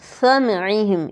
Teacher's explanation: ہم اکثر سیٹی کی اواز گم کر دیتے ہیں تو یہ ثا بن جاتا ہے